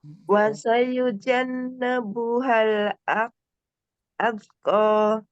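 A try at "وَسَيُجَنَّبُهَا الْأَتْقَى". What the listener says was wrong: Dengungannya dipanjangkan. Dengungan huruf nunnya dipanjangkan.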